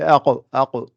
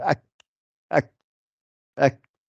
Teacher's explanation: Quand on fait aq, aq, l'air ne sort pas, mais par contre, quand je fais ak, ak, ak, il y a un peu d'air qui sort, le kaf. Donc le kaf, c'est le kaf qui est là, le kaf, ak, ak.